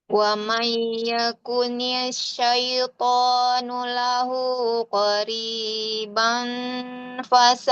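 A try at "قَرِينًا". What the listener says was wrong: Titiknya di atas. Qorinau, bukan qoribang.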